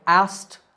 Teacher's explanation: The trick to saying it correctly is to make the K silent. So it sounds like asked in American English and asked in British English, but in both we don't pronounce the K.